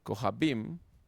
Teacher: Ja es la pretónica, bim es la tónica